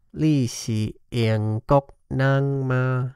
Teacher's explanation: we can see an initial drop, then an overall trend of low tones, then an overall trend of high tones. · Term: sandhi